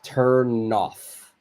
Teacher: I've moved move the N over to the next word and our pronunciation becomes turn off so the N is linked with the vowel o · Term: link these two words